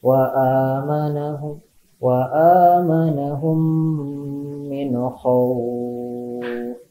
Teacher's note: nun mati menghadapi huruf kha ya, dibacanya jelas